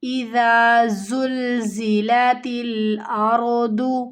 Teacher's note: را یہاں پہ موٹی پڑھی جائے گی کیونکہ را ساکن سے پہلے زبر کی حرکت ہے۔ دعات کی ادائیگی کو کمپلیٹ کرنا ہے، موٹا حروف ہے موٹا کر کے پڑھنا ہے، نہیں تو یہاں پر دال کی آواز آئے گی اردو، تو یہ غلط ہو جائے گا۔